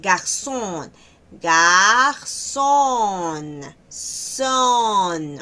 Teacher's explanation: Entonces, cuidado con ese sonido porque no es no es solo con la S. Hay que cuidar que es con doble s, es decir, el sonido es más largo.